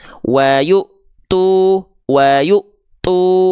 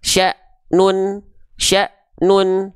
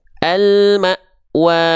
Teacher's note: huruf-huruf yang berjumpa dengan hamzah sukun akan merasakan sifat tertahan suara dari huruf hamzah sukunnya.